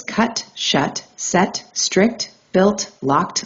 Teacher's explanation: Airflow completely stops, the tongue seals against the roof or front region, pressure accumulates, and then releases abruptly.